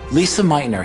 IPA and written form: ˈliːzə ˈmaɪtnər (Lise Meitner)